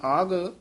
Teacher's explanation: ਇਹ ਆਗ ਘਗੇ ਨਾਲ ਬੋਲਣਾ ਕਿਤੇ ਅੱਗ ਨਹੀਂ ਕਹਿ ਦੇਣਾ ਘਾ ਹੈ ਪੋਲਾ ਬੋਲਣਾ ਆਗ